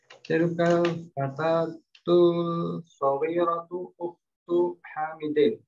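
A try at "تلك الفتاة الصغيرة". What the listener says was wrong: Ya, huruf shad itu syamsiah ya. Jadi alif lamnya dileburkan. Tilkal fatatus saghiratu begitu.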